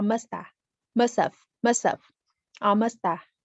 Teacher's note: We can say you must have, like this. The tricky connected speech aspect of this utterance is the reduction of have. It's not must have, but must have, or musta, or musta.